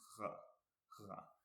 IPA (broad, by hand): ʁ